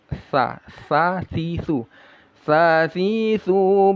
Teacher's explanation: sa makhrajnya ujung lidah yang menempel ke ujung gigi seri atas.